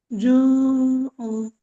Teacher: জু উ বলবেন না, জু বলে গলার ভেতর নিয়ে ছেড়ে দেবেন আওয়াজটা